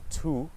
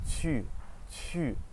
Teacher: It's the same as the English U, but your mouth is much more pursed. So think about if you ate a lemon, your mouth would be like, or if you were trying to whistle, it'd be.